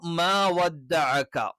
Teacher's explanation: അതേ സമയത്ത് അവിടെ ഉറപ്പുള്ള ഭാഗത്ത് ടച്ച് ചെയ്യുമ്പോഴാണ് എന്ത് ചെയ്യുന്നത്, ക എന്നുള്ള ഉച്ചാരണം വരുന്നത്. ക എന്നുള്ള ഉച്ചാരണം കാഫ് എന്ന് പറയുന്ന ഉച്ചാരണത്തിന്റെ തൊട്ട് ഫ്രണ്ടിലായിട്ട്, കാഫ് കുറച്ച് ബാക്കിലായിരിക്കും, അതിന്റെ തൊട്ട് ഫ്രണ്ടിലായിരിക്കും ക എന്നുള്ള ഉച്ചാരണം വരുന്നത്.